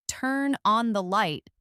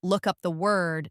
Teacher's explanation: Usually, the stress in a phrasal verb falls on the particle, the second word. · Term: stress pattern